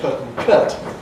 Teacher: You get people from Leeds, Birmingham who have very [ə]-like qualities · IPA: [pət] <put> : [kət] <cut>